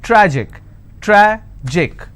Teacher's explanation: tragic tragic I will stress on tra